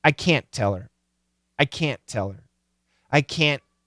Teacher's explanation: we hear that stopping of the T and then that full T.